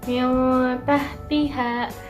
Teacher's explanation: nun sukun bertemu ta, dibacanya samar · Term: ikhfa